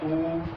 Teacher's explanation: ऊ तो देखो होठों की जो आकृति है वो वृत्त के जैसे बन जाती है